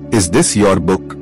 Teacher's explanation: Yes/no question, voice goes up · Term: intonation